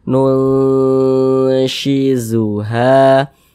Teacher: kita tahan sejenak suaranya dua harakat kita tahan sepanjang dua harakat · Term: ikhfa hakiki